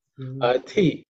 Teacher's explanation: The Dha in that Dhi is the fourth letter in the Dha Varga. So it has to be aspirated.